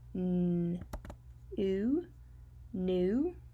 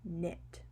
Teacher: Remember, at the beginning of the words, we do not say the K. Sounds like n, n.